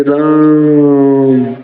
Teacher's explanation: र पर बहुत ज्यादा समय दे रहे हैं, अर्थात दीर्घ स्वर से भी ज्यादा समय दे रहे हैं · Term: प्लुत स्वर